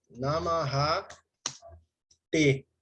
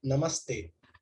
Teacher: a visarga vai se transformar na sibilante dental